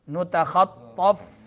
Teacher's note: فا جو ہے نچلا ہونٹ جب سامنے دانتوں کے نیچے آ جاتا ہے تو فا ادا ہوتا ہے